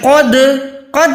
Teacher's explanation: دال ساکن ہے تو یہاں پر آواز کو لرزش دیں، آواز کو لوٹائیں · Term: کلکلا